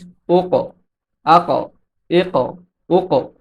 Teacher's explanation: কাফ হচ্ছে কলকলার হরফ এবং এতে সাকিন হয়েছে এজন্য কাফের উচ্চারণটা একটু ধাক্কা দিয়ে করতে হবে